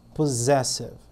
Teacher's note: Nós vemos 2 S's ali, mas para quem pronuncia, tem somzinho de Z.